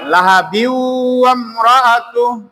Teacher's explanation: লাহা বিউ শেষে, তাহলে গোপন নুন সাকিনের বামে ওয়াও আইসার কারণে গোপন নুন সাকিনটা উচ্চারণ হয়নি, ডাইরেক্ট ওয়াও উচ্চারণ হয়েছে, কারণ ওয়ার উপরে তাসদীদ আছে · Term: ইদগম